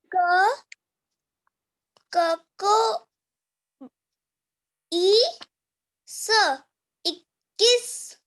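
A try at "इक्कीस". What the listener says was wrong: ये आपने बोला ई क को ई, क हाफ है बच्चे, ई के आगे आधा क ऐसे बोलोगे आप।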